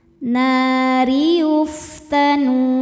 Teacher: Ro dibaca tarqiq karena berharokat kasrah. Dibacanya tipis.